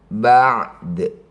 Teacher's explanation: Jadi ketika ada dal sukun di akhir bacaan ini disebut qalqalah sugrah. Cara bacanya qalqalah artinya memantul dipantulkan · Kubro itu artinya besar, jadi pantulannya sangat jelas. Ba'du saat dihentikan ba'd, ya, tetap memantul. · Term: qalqalah sugro